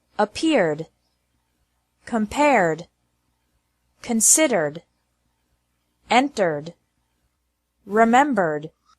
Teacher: e d is pronounced like d with no extra syllable after verbs ending with an r sound